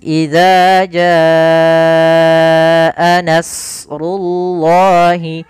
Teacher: Maka nas tebalkan, tapi nanya tipis.